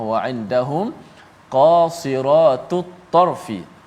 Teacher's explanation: ada huruf-huruf yang tebal dan nipis seperti huruf qaf baris atas, kemudian sad yang berbaris di bawah mengekalkan ketebalannya, kemudian huruf ra qasira, tiga-tiga itu huruf yang tebal.